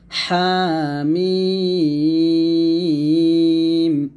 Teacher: হা এখানে এক লিপ টান হবে, মিম 4 লিপ টান হবে। হাটা একটু গলার মাঝখান থেকে চাপ দিয়ে বলতে হবে হামিম।